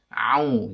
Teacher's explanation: Au itu berarti huruf ain berharokat dhammah. Ain itu secara makhraj tempatnya di tengah-tengah tenggorokan ya. Jadi bukan di hidung. Ini yang kesalahannya ketika membaca ain itu di hidung gitu.